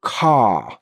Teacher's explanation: We don't pronounce the R at the end of that word because we just don't.